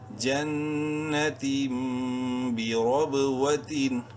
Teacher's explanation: رو کو منہ بھر کے پڑھیں گے زبر کی وجہ سے، اور با میں قلقلہ کریں گے چونکہ وہ حروف قلقلہ میں سے ہے اور ساکن ہے۔